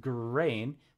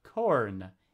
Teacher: it is the velar stop voiced and unvoiced